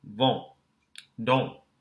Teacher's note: we qualify the N as a silent consonant in the cases when the vowel becomes nasalized. · Same thing, N and then S. Note that the N, when it follows a vowel, is silent. We don't hear it. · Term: nasalized vowel